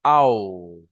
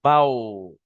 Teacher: দুই ঠোঁট না মিলিয়ে মাঝখান হতে উচ্চারিত হয় ওয়াও। এখন দুটো ঠোঁট মিলবে না, মানে একটা ঠোঁট আর একটা ঠোঁটের সাথে স্পর্শ হবে না, মাঝখানে খালি থাকবে, ওই অবস্থায় ওয়াও উচ্চারণ হয়।